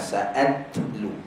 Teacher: Makhraj ta ujung lidah, belakang gigi atas.